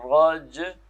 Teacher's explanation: جیم پہ قلقلہ ہوگا تو اس کو ملانا ہے، را اور جیم کو ملانا ہے